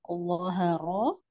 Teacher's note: Kenapa Allah lebih tebal karena dia ada sifat itbaknya